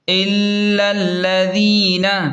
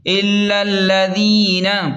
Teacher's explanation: حمزہ لام زیر ال، لام لام زبر لل، الل، لام زبر ل، ذال یا زیر دی، نون زبر ن، الا الذین، یہاں پر ذال ہے تو اسے نرمی سے پڑھیں اور یا مدہ کو تھوڑا سا کھینچ کر پڑھیں